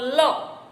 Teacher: પાશ્વિક તો જીભનો આકાર ઊંધા નળિયા જેવો થાય જ્યારે આમ અને હવા જીભની બે બાજુથી નીકળે ત્યારે એને પાશ્વિક સંઘર્ષી વ્યંજન કહેવાય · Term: પાર્શ્વિક ધ્વનિ